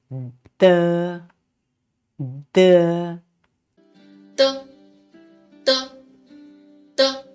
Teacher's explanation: tip of the tongue to the upper R of the teeth and then drop the tongue to let the air out and this sound is not aspirated just as in the English word dad